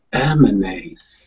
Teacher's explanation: That second A is like a schwa